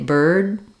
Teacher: I'm stopping the air, I'm lifting my tongue for that D, but I'm not letting it back out. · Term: unreleased